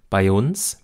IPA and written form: baɪ̯͜͜͜͜͜͜͜ ͜ˈuːns (bei uns)